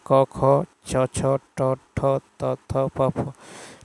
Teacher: प्रत्येक वर्ग का पहला और दूसरा व्यंजन वर्ण अघोष ध्वनि है